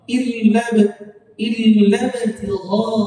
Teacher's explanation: illa tertulis panjang, tapi wajib dibaca pendek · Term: takhallus bil hadfi